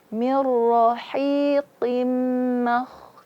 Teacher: Ma tipis pada posisinya dan kho tebal pada posisinya. Kenapa kho tebal? Karena dia bersifat isti'la. Apa itu isti'la? Terangkatnya pangkal lidah ke langit-langit atas.